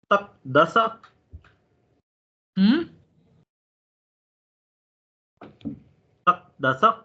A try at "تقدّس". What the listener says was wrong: تقدس نہیں تفاعل ہے نا عین کے اوپر شد ہے.